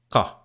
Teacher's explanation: In Standard Arabic, this is like a k sound, but articulated further back in your mouth